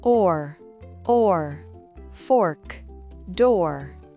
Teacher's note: Le son or est un O arrondi suivi d'un R.